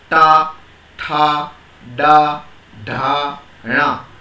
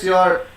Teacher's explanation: So while you speak ta, tha, da, dha, na, in the same place the top of your tongue is touched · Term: cerebral